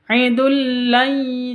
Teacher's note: Wajib masuk ke lam tanpa dengung. Tidak boleh didengungkan.